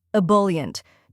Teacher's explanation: First, we have ick, which sounds like the I in bit. Next is bul, which rhymes with full and is stressed. Then comes yunt, which sounds like yunt in important.